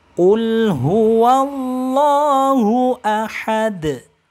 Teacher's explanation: lam jalalahnya ini hukumnya Mad Thobi'i dan panjangnya hanya boleh 2 harokat tidak boleh lebih tidak boleh kurang